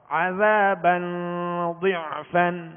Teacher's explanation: زال کو نرمی کے ساتھ, اس میں سیٹی کی آواز نہیں آئے گی, یعنی عذابا نہیں پڑھیں گے ورنہ زال زا میں تبدیل ہو جائے گی, بدل جائے گی.